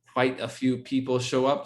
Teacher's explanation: We leave off the do or the did and just have that rising intonation at the end